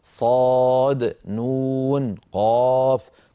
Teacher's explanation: كل هذه الحروف المقطعه نمدها بمقدار ست ست ست حركات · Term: المد اللازم